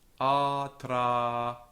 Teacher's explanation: So we have two long vowels that don't carry stress.